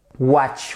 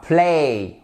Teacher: Ce son est assez sourd par rapport à play, watch, son sourd, le ch, play, a, son sonore.